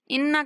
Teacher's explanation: انا پر غنہ کریں گے، غنہ کرتے ہوئے نون کو تھوڑا کھینچ کے پڑھیں گے